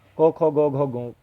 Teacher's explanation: को आपके गले से निकलेगी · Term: कंठ्य ध्वनि